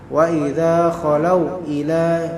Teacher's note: Tidak ada kita katakan wa idza khalau atau wa idza khalau ila syaya', enggak, tapi langsung wa idza khalau ila. Nah, wa idza khalau ila tidak ada mad, tidak ada pemanjangan, melainkan normal